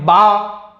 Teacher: दोनों होठों के तर हिस्से से अदा होता है बा